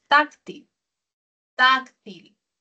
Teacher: El acento prosódico está en la penúltima sílaba, es grave.